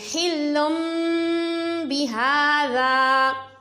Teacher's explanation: بہذا میں با کو بغیر کھینچے پڑا, ہا کے اوپر کھڑا زبر ہے کھینچ کر پڑا, ذال الف زبر ذا کھینچ کر پڑا کیونکہ آگے الف مدہ ہے.